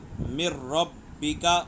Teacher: نون پڑھا نہیں جا رہا، نون کا را میں ادغام ہو گیا